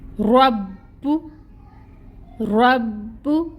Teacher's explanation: تو ہم نے رو کو پہلے جوائن کرنا ہے با کے ساتھ ٹائٹلی، ٹائم ٹیکنگ ہوگا۔ تشدید ہے، 2 حرف ہم نے ادا کرنے ہیں، با ساکن بھی اور با پیش کے ساتھ بھی، تو اس وجہ سے تھوڑا ٹائم لگے گا۔ ہم کہتے ہیں کہ تشدید پہ ہم ٹائم ٹیکنگ کرتے ہیں۔